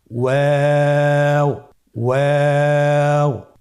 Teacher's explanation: ওয়াও হরফটি উচ্চারণের ক্ষেত্রে বারিক হবে এবং 3 আলিফ টেনে পড়তে হবে